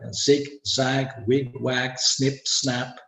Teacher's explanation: I E is a high front vowel and a is a back vowel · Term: fixed segment red duplication, polar vowels